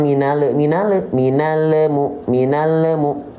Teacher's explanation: dilafalkan dengan suara tambahan berupa e pantulan